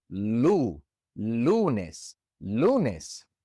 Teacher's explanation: The stress naturally falls on the second to last syllable.